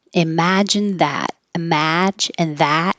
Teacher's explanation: imagine that have the same vowel ah